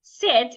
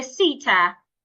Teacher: when he wants to pronounce some words that end with consonant at the end, it would add a vowel. So instead of saying sit, it will say sitta.